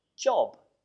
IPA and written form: dʒɒb (job)